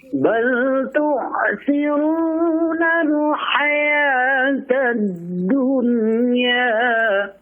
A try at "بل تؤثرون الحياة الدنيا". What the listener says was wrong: Bal tu'thiruna. Bal tu hamzah biasa. Jangan bal tu'thir, jangan. Bal tu'thiruna.